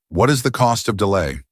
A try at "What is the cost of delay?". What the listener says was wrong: Wait, so you need to do that with greater emphasis.